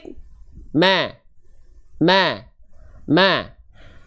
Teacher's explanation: tipis tapi dalam keadaan agak tersenyum nama sifatnya istigfal dan infitah istigfal pangkal lidah terhampar tidak naik infitah Aula mulut terbuka dua sifat tadi akan lebih tertunaikan kalau